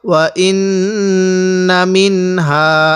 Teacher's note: নুন সাকিনের পরে হাটি হলো ইজহারের হরফ এজন্য আমরা এই নুন সাকিনের মধ্যে স্পষ্ট করে পড়ব